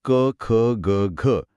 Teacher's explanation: ख ग घ >> हे सगळे कंठे आहेत >> कंठ्य >> म्हणजे यांचा उच्चार थेट कंठातून किंवा गळ्याच्या मागच्या भागातून होतो